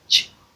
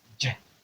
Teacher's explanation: the difference between the ch sound and the j sound is the application of voice. So here you apply voice, here you don't apply voice.